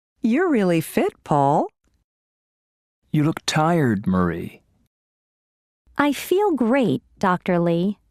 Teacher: notice these statements with direct address there is usually falling intonation and a pause before the name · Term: intonation with direct address